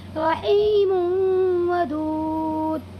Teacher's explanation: تنوین کی آواز کو واو میں بدل کر پڑھیں گے تھوڑا سا غنہ کے ساتھ ناک میں لے جا کر کے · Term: ادغام ناقص